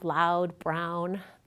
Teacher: the tongue again starts low in front [a] then it moves high into the back of the mouth and the lips get rounded too.